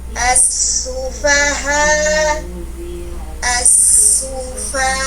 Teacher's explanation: Huruf H ada hams keluar napas, ada rohwa mengalir panjang suara desahan napas kita, istifal infitah tipis. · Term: khofa